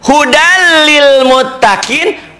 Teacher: idgham bilagunnah meleburkan dimasukkan tetapi tidak disertai dengan dengung